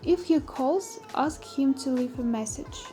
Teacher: The tone rises in the first clause and falls gradually in the second clause.